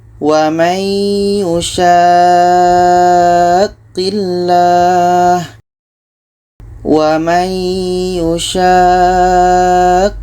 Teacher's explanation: Sama dengan ini mat lazim kilmi mutsaqqal. Kita panjangkan sya ini 6 harakat baru masuk ke huruf qa.